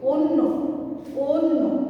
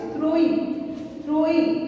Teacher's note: যখন এটি আমরা উচ্চারণ করব তখন এই অটি ও এর মতো হয়ে যাবে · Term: অয়ের বিকৃত উচ্চারণ